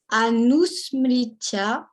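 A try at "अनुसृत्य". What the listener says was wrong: Sritya, not smritya. Anusritya.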